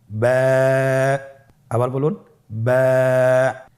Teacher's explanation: বা হরফে টান হবে। এক আলিফ টান।